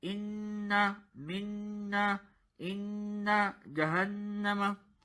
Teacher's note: the gunna sound comes from your nose